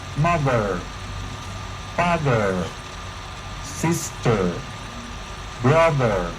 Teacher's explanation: en el inglés americano, sostienen un poco más la vibración de las cuerdas vocales, por lo que el sonido R es más perceptible.